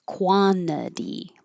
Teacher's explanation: When the t is after the n and it's in the unstressed syllable, it's okay to skip it.